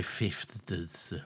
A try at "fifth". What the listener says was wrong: or whatever you say, because you don't say fifth properly. Yeah, it's not. There's no D. There's no D in Fifth. Fifth. Fifth. You're not saying it. You're saying a different thing to me. You're not saying. You said it differently that time.